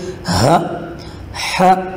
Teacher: ہا گلے کے آخری حصے سے جو سینے کے قریب ہے وہاں سے آواز نکالیں گے